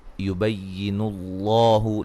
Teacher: لفظ اللہ کو خوب موٹا کریں گے، اس سے پہلے حرف پر پیش ہے